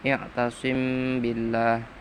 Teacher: Nomor 2, i'tasim billah, bacaan ikhfa syafawi, karena mim mati bertemu ba, ikhfa samar